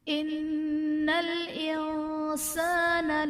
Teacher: ان الانسان میں نون مشدد ہے، یہاں پر غنہ کریں گے۔ انسان میں نون ساکن کے بعد حروف اخفا میں سے سین ہے تو یہاں پر اخفا کا قاعدہ ہوگا۔